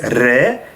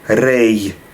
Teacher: The last word re, we pronounce it as re, and Ashkenazim pronounce it as rei